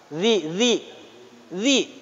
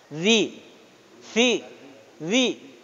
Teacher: Jadi lidah di ujung gigi atas. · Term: lisani